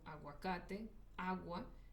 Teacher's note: son vocales unidas con la U y la A, y eso no significa que es U y A, significa que es un diptongo que nos hace un nuevo sonido